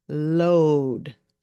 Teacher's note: you might notice that my lips were rounded when I said the L Sound load right that is because of the O the O A